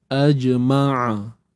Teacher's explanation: Okey, macam mana nak dapatkan sifat syiddah pada jim ni? Waktu kita matikan bunyi dia tu melekat. Bunyi dia melekat. Sampai tak dengar apa-apa. Itu syiddah.